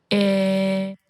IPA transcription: ɪ